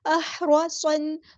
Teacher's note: احرصن، صاد ہمارا heavy letter ہے، پورا ادا کریں گے، موٹا ادا کریں گے. اور صاد حروف صفیریہ میں سے ہے تو اس میں سیٹی بھی آئے گی